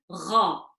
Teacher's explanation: you'll notice that there's a slight gargle or a slight scratch to when you're pronouncing it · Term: heavy G